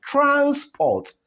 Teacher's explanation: the energy applied in the course of pronouncing the first syllable will be higher than the energy applied as we pronounce the second syllable. That is why the stress is on the first syllable.